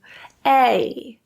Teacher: It slides from the eh to the I sound. It's almost, in a lot of ways, sounding a lot like e.